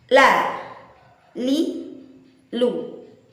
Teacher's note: dengan suara yang tipis, dengan suara yang santai, tanpa harus menekuk lidah, tanpa harus menukik suara sehingga menjadi suara sangat tebal, dan itu adalah cara yang benar.